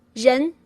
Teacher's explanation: when you say human or person or people, that's zhen with a second tone